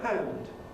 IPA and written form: hænd (hand)